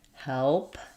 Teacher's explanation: Your jaw for the vowel is kind of open part way. It's a front vowel. The front of my tongue is down and the back of my tongue is lifted.